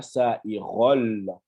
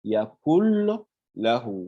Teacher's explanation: le nun là, hein, il disparaît, le lam se dédouble